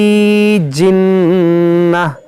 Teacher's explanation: یہاں نون مشدد غنہ ہوگا، گول تا کو ہا ساکنہ بنائیں گے۔